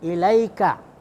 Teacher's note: ilaika ini madlin, ya, mad panjang yang lunak. Ya, jadi dibaca lembut.